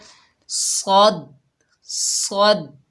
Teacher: ज़बान का बड़ा हिस्सा यानी पिछला हिस्सा ऊपर तालू की तरफ उठाना है और मुंह का मजबूती से दायरा बनाना है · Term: मोटे हरूफ